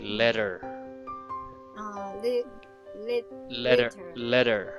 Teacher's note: So in the word letter, there is a flap T there. Native speaker would read T like D.